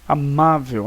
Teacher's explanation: O ma é a sílaba tônica. Você então vai observar qual é a posição dela, é a penúltima.